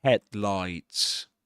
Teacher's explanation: in the word headlights we accent the first um syllable head